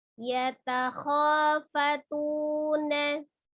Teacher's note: Ada kho, ada alif sebelumnya fathah ya, mad tabi'i alif dibaca 2 harokat. Mad tabi'i waw juga demikian, ada waw sukun sebelumnya dhammah nih di huruf ta, jadi tu-nya juga 2 harokat. Walaupun dia 2 harokat tapi berharokat fathah, maka tetap dibuka ya mulutnya ketika fathah.